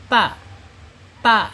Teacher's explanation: ujung lidah menyentuh pangkal gigi seri atas ya